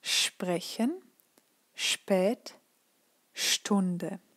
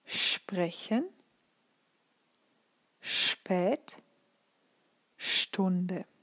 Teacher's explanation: And then we have ST and SP, and here we actually just have an SCHP or SCHT, but because it would be a bit long to actually write it, it's really pronounced SHP or SHT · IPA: [ʃp] [ʃt]